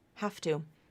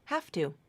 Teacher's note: T it that you pronounce it like an F have to the voicing is gone completely